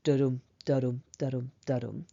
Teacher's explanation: the heartbeat rhythm of unstressed, stressed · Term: iambic tetrameter